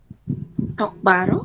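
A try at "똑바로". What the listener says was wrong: Ya, tokparo ya. Tokparo. Jadi B-nya ini dia akan berubah menjadi P. Tokparo.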